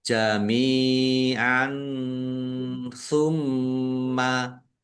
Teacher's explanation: fathah tanwin bertemu dengan huruf tsa bacaan ikhfa dibaca samar-samar · Mim tasdid, bacaan gunnah atau mendengung, ditahan biar tampak mendengungnya.